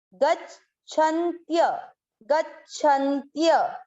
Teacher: य पूरा था इसलिए य में अ मिक्स कर दिया